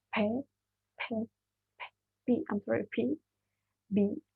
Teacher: it's just our upper and bottom lips like there was a burst of the air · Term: bilabial